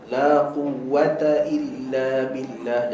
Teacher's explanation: duduk kat UK lama dia keluar angin pada ta dan Kaf so elakkan daripada angin pada ta dan Kaf